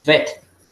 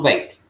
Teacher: Por ejemplo, algunos pronuncian Beit. No es así, se pronuncia como una E súper larga